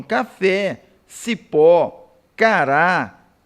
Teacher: vão possuir o acento tônico na última sílaba ou seja a sílaba tônica é a última na palavra